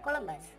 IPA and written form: kəˈlʌmbəs (Columbus)